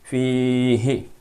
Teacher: اب اس یا کی کوئی خاص آواز نہیں ہے، لیکن یہ آواز یہ ایک میسج دے رہی ہے یا کہ آپ فا کی آواز کو کھینچ کے پڑھو۔ ہا کے نیچے زیر ہے تو ہا کی آواز کو بغیر کھینچے پڑھو